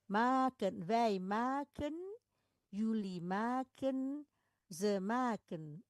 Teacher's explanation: suku pertama dia tidak ditutup oleh huruf mati sehingga bunyinya panjang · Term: Bunyi panjang